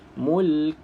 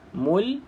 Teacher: anahullahul Mul ha tak ada huruf Kaf tu hilang tak boleh walaupun kita berhenti kena bunyikan huruf Kaf yang mati tersebut